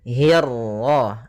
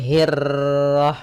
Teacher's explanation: Kemudian hi-nya tipis, kasrah bertemu ra yang tebal. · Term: ra tafkhim